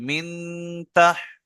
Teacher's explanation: মিনটা গুণনা করতে হবে, কারণ নুন সাকিনের পরে তা এসে